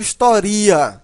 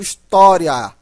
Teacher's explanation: Esse i é fraco está ao lado de uma vogal né e tem som de i portanto semivogal